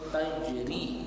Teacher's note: Tajri, rinya panjang karena ada huruf ya berbaris sukun.